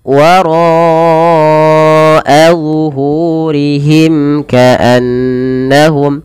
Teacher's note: Kemudian pada lafal wara'a zuhurihim ka'annahum, pada lafal ro-nya tebal karena dia ro tafkhim. Ro yang dibaca dengan tebal karena dia berharokat fathah. Dan ro sendiri punya bacaan mad wajib muttasil, maka ro dipanjangkan 4 harokat.